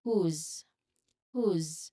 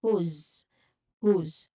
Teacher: the last sound of the word is buzzing. It's vibrated. It's buzzing. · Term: voiced sound